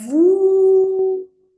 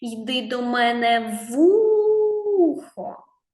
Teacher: так склад ву тобто перший Звучав дуже довго поставимо наголос